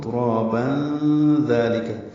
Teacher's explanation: تنوین کے بعد ذال آنے کی وجہ سے اخفا ہوگا